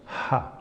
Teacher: can produce for example aspirates like ha like this no ha this is an aspiration but it does not block it's just a slight closure of your throat